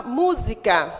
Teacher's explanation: Sílaba tônica é o mu e ela vem acentuada